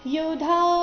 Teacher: ಇಲ್ಲಿ ಧ ಮಹಾಪ್ರಾಣ ದೀರ್ಘ ಬರಬೇಕು.